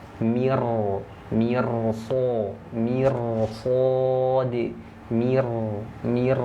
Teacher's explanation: Jadi huruf r-nya dibaca tebal